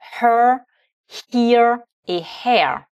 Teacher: Alors tous ces trois mots commencent par la lettre H, donc on exprime bien la lettre H en faisant passer une colonne d'air dans la gorge